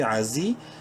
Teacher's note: زا کو ایک الف کے برابر لمبا کریں گے